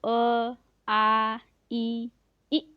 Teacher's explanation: इनमें ओष्ठ जो है वो सर्किल नहीं हो रहे हैं, तो इसीलिए अवृत्ताकार हो गया।